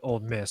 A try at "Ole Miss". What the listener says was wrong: You realize it's Ole Miss, not Old Miss.